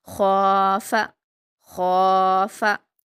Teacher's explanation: लेकिन ख के मखारज और सिफात को ध्यान रखना है। ख को हलक से अदा करते हैं और मोटा पढ़ते हैं। · لیکن خواہ کے مخارج اور صفات کو دھیان رکھنا ہے. خواہ کو حلق سے ادا کرتے ہیں اور موٹا پڑھتے ہیں